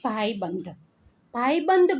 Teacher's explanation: ભાઈબંધ બોલો છો ત્યારે અનુસ્વાર બ ઉપર છે એનું ઉચ્ચારણ કેવું થાય છે ન જેવું થાય છે